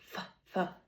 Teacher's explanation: And the manner of articulation is a fricative um a narrow space rubbing together um allowing air flow. And then it's an unvoiced sound because my vocal cords are not vibrating. So f the friction not vibrating.